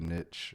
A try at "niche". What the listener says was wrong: Yes, because there's no T in it. No. that from an English teacher I find abhorrent.